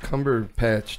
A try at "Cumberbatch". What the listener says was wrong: You said Cumberpatch. Cumberbatch, not Cumberbatch. No, he said Cumberpatch.